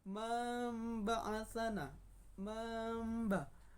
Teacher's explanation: Mamba sedikit tertahan atau sedikit mendengungkan. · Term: iklab